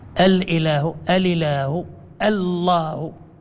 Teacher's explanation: فحذفت الهمزة بالنقل ثم التقى اللام باللام